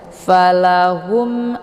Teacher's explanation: satu huruf hijaiah yang selain ba dan mim ya cara bacanya mimnya dibunyikan secara jelas atau jelas bunyi m-nya cukup ditekan saja tidak perlu ditahan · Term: izhar syafawi